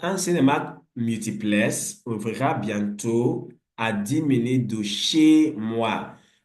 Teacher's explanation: Ouvrira dera is not stressed. Minute is not stressed because the stress is on multiplex, bientôt, and of course, chez moi, the moi there. · The key thing is that the last syllable is stressed. And that syllable that is stressed is longer in duration. We call that l'intensité. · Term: syllabes accentuées